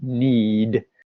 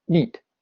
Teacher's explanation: called allophonic lengthening in linguistics but what it means is that if a word ends in a voiced consonant right this is kind of consonant that has a draw sound it's a vibrated sound like need it will make the vowel quite long